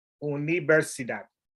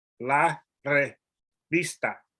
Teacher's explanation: the V is a soft B